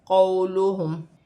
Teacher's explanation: واو ساکن سے پہلے زبر ہے تو واو لین بنے گی، اسے کھینچا نہیں جائے گا